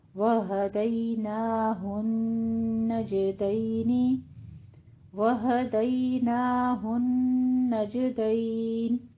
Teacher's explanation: نون کے اوپر غنہ بھی کرنا ہے اور جیم کے اوپر قلقلہ بھی کرنا ہے